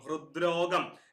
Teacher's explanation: ത എന്നുള്ള ഖരവർണ്ണം ദ എന്ന മൃദുവായിട്ട് മാറുന്നു